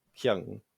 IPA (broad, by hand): kˠiæŋ